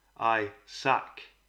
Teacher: the emphasis is on the last syllable and not on the first